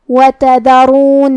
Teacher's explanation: کلمت تذرون میں حرف دال کی ادائیگی زبان کے سر اور اوپر والے دانتوں کے اندرونی کناروں سے ہے. پھر یہاں را پہ پیش ہے تو را کا حکم ہے تفخیم، ہمیں را کو موٹی آواز میں ادا کرنا ہے